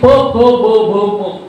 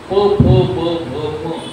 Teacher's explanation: फक्त ओठ एकमेकावर आपटतात